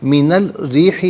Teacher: قاصفن نہیں، قاصفن من الریح، من میں نون پر زبر ہوگا ملا کر پڑھنے کی صورت میں، اسے الریحی کی را کے ساتھ ملائیں گے، اور را کی آواز کو ادا کیا جائے گا، لام کی آواز ادا نہیں کی جائے گی